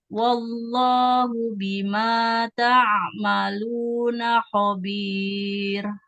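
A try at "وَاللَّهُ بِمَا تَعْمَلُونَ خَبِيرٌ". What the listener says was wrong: Nah, ini ya dalam ucapan lafaz Allah jangan seperti ada huruf wawunya. Jangan wallah, wallah. Langsung kalau wallahu. Wallahu. Jangan waw. Tidak waw, tapi wal. wallah. Cuman lamnya iya, cuman lamnya tebal. Wallahu, wallahu bima khabir.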